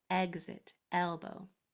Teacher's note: your mouth is open in medium shape. Any more and it will be an ah. Any less and it will be an I. Medium is eh, like exit, elbow.